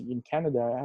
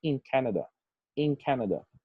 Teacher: the assimilation happens here between the n and the k sound. This is for fast speech purposes.